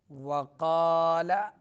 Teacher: قاف پر پڑھیں گے اور اس کے بعد الف ہے وہ بھی پر پڑھا جائے گا